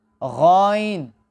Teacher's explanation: غائن اور خا اس دونوں کی بھی ایک مخرج ہے، یعنی حلق کے پہلے حصے سے حرف غائن ادا ہوتی ہے